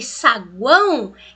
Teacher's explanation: E esse O aqui, ele tem som de U. Eu não falo saguão O, eu falo saguão U. Então, isso é som de U junto de uma vogal na mesma sílaba.